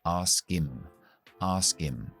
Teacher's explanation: cuando nosotros eliminamos las H's de las palabras him, her, his o he cuando caen después de verbos como este.